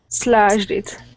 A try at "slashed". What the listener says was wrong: Okay, so with that ed, we need to add a t there. Slashed.